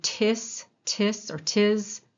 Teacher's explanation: when you're making that t your vocal cords do not start vibrating there they start vibrating at the vowel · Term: voiceless